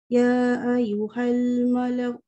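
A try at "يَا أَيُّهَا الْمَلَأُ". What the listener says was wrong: Ya panjang sikit.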